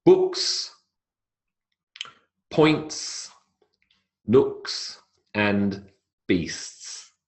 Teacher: All of those have the unvoiced S sound on the end.